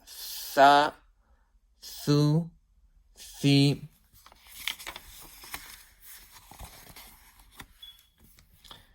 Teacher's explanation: with the tip of the tongue touching the edge of thanaya ulya